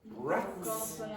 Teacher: So with T, there's no vibration, so it takes a s with no vibration.